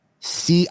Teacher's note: Michigan people don't say the T. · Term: Michigan D